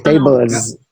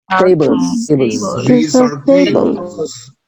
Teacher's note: como la L es una consonante sonora, va a modificar el sonido de la S. Entonces tenemos que pronunciar La S. como la Z.